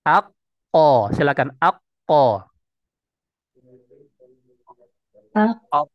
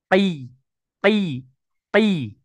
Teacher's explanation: karena yang terangkat itu adalah pangkal lidah bukan jazrul lisan jadrul lisan itu akar lidahnya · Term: huruf qf